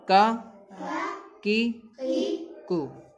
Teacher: چھوٹا کاف جو ہے وہ ہماری زبان کی جڑ جو ہے سخت والے حصے میں لگتی ہے، کا ادا ہوتا ہے، کاف۔